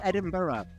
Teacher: make two syllables out of the burr at the end because the word burr in Scotland is usually pronounced as bur.